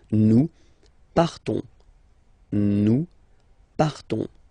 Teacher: So classic ending ONS, you don't pronounce the S, you just have this on sound nasal.